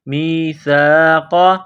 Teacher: وَإِذْ أَخَذْنَا، نون الف زبرنا، وَإِذْ أَخَذْنَا میثاق، میم کو یا کے ساتھ ملانا ہے، سا ہے، سا کو باریک کرنا ہے، زبان باہر نکالیں گے سا کو پڑھتے وقت۔ میم یا زیر می، سا الف زبر سا، میثا، قاف زبر قا، قاف کو موٹا کرنا ہے، میثاق۔